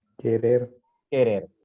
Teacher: querer no lleva tilde pero si tiene este más enfatizada la última sílaba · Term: sílaba tónica